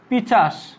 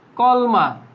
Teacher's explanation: দুইটা ব্যঞ্জন ধ্বনির একটা কি স্থান পরিবর্তন করে দিছি, আর কিচ্ছু করি না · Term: ধ্বনি বিপর্যয়